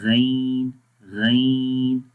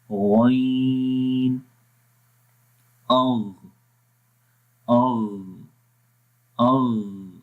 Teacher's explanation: इस्तिअला में हर्फ को मोटा पढ़ते हैं, यानी कि ज़ुबान की जड़ तालू की तरफ बुलंद होती है